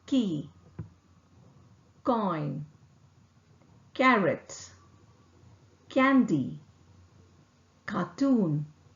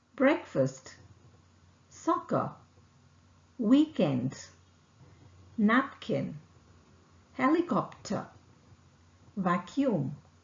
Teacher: the sound is articulated with the back of the tongue making firm contact with the soft palate vocal cord does not vibrate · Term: k sound